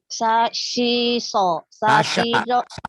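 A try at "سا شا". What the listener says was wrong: Bukan sasi. Sasha. Dibacanya si mulu. Sasha.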